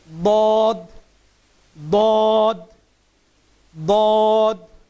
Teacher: এই হরফটার উচ্চারণ হয় জিহ্বার গোড়ার কিনারা উপরের মাড়ি দাঁতের গোড়ার সাথে সম্পৃক্ত হয়ে হরফটির উচ্চারণ হবে।